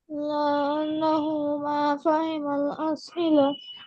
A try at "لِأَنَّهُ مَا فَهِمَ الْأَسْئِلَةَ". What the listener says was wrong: আমি বলেছি এইরকম যখন আসবে তোমরা এগুলোকে কখনো লা আন্নাহু বলবে না, সবগুলো লি হবে, লি আন্নাহু। লি আন্নাহু মা ফাহিমাল আসইলা।